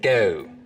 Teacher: the goat diphthong starts to move forwards in the mouth